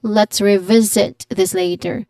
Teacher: There's a clear diphthong in the first syllable. And then the T in let's should smoothly connect to the R in revisit